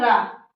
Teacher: जिह्वा 2-3 बार कंपन होता है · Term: प्रकंपित व्यंजन